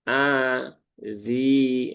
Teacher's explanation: setelah kasroh maka zi-nya masuk matobi'i dibaca panjang dua harokat atau cukup satu kali ayun saja.